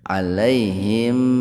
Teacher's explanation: Alaihim idhar safawi, mim sukun ketemu ha secara terpisah. Jadi mimnya betul-betul dibaca jelas di bibir gitu. Safawi itu bibir.